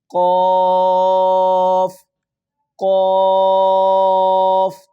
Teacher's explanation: آگے قوف، یہ تالو کا بالکل آخری حصہ، کوا جہاں پہ ایک چھوٹی سی ڈنڈی سی بھی نیچے آئی ہوتی ہے، وہاں سے جو تالو کا نرم والا حصہ ہے آخری، وہاں سے یہ لفظ ادا ہوگا، بالکل موٹا کر کے اس کو ادا کرنا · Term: تالو کے آخری حصے